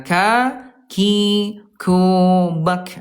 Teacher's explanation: Huruf kaf ayah bunda. Yang kesatu dari segi udara dia namanya alhams ayah bunda. Keluar udara ya. Ka, kubak. Ada udara.